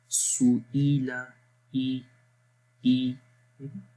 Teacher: گلے کے سب سے نیچے والے حصے سے آواز آ رہی ہے